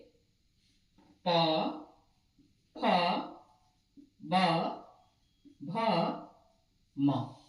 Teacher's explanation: प वर्ग का उच्चारण करते हैं हम लोग होठ से